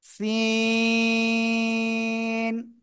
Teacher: জিহ্বার আগা সামনের নিচে দুই দাঁতের পেট ও আগার সাথে লাগিয়ে চিকন আওয়াজে এরকম একটু আওয়াজ হয়ে উচ্চারণ করতে হবে, চারে লিপ টেনে পড়তে হবে।